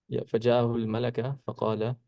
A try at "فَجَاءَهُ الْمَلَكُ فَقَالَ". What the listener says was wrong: Yeah, why are you saying al-malaka? No, I mean the i'rab.